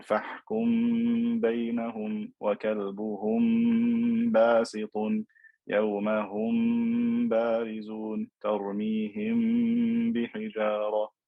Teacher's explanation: we do ikhfa shafawi, where we elongate the m sound